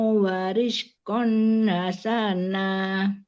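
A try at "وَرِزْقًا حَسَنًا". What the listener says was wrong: Haknya jangan panjang, warizqan hasana. Warizqan hasana.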